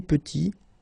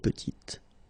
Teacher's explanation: Final T is not pronounced, and then when you add this E at the end, you get the sound T